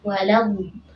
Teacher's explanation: dhalnya di sini panjangnya 6 harakat, di sini hukumnya mad lazim kalim mutsaqqal ya, panjangnya 6 harakat